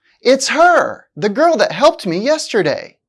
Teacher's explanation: although her is a pronoun it's still stressed because the speaker wants to emphasize her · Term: stress a function word